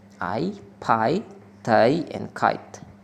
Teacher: Aspirated plosives, such as the initial sounds e and pi, tai, and kite, are voiceless plosive that are pronounced with a strong burst of air, resulting in a slight puff of air after the sound is released